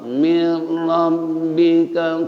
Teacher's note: idgham kamil atau idgham bila gunah nun ketemu ra